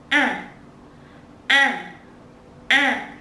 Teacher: Normal A is pronounced in the whole mouth, with your mouth open wide and round.